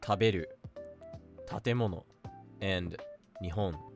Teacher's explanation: The next one is called nakadaka, and words with this pattern have a pitch drop somewhere in the middle of the word